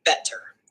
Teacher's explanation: the T sound, or flap in American English, is ambisyllabic, potentially belonging to both the coda of the first syllable bet and the onset of the second syllable ter.